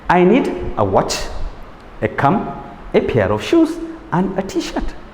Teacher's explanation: So when you're listing, before you get to the last aspect, it is the rising tone.